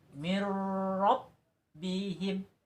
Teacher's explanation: maka ketika ada huruf nun mati bertemu dengan huruf ro maka bacanya idgham bilagunnah dibaca tidak berdengung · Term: idgham bila gunah